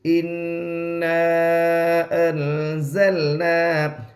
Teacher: نون کی آواز کو ناک میں چھپا کر پڑھیں گے, اس کو اخفا کہتے ہیں